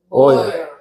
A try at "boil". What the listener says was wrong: 우리말로 보일 이렇게 하지 말고요. L 발음이 있으니까 보일 비슷하게 해야 돼요. L 발음이 R 이렇게 되니까. 예, 영어는 L 발음을 정확히 합니다. 우리가 볼 땐 그냥 보일 이러지만 그게 아니고 boil, L 이렇게 되는 거.